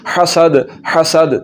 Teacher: सीटी की आवाज़ निकालेंगे तो फिर सीन पढ़ा जाएगा। अगर सीटी की आवाज़ ना निकली तो फिर सीन नहीं पढ़ा जाएगा बल्कि सा पढ़ा जाएगा।